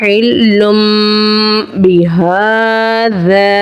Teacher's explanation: اقلاب کا قاعدہ ہے تنوین کی آواز کو میم کی آواز سے بدل کر پڑھیں گے۔